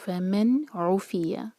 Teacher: اور ان سب ورڈز میں نون پر اظہار کیا جا رہا ہے، نون کی آواز کو کلیئر پڑھا جا رہا ہے اور نون پر ٹائم نہیں دیا جا رہا